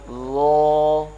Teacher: ظا کی جو آواز ہے یہ بھی نرم ہے لیکن موٹی ہے